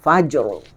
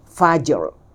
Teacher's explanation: Ra tebal tapi dia turun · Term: sebutan raum